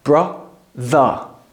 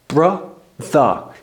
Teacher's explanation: it's kind of a rounding of the r that we don't do in British English we leave it open brther uh my mouth is still open brther to practice this